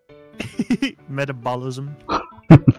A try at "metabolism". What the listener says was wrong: Metabolism, not metabolicism.